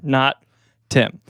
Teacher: There's a glottal stop in there.